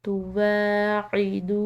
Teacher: دال کے بعد واو ساکن، تو ایک الف کی مقدار اس کو کھینچ کر ادا کیا